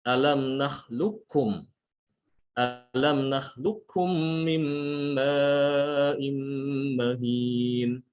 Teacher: Di sini qaf diidghamkan ke huruf kaf ya.